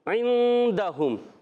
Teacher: اخفاء کی معنی ہے نون کو چھپا کے ادا کرنا، تو غنہ کریں گے عندہم. اب یہاں پر عین کی ادائیگی حلق کے درمیان والے حصے سے، دال پر زبر ہے، حرکات کو بغیر کھینچے پڑیں گے. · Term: اخفاء کا غنہ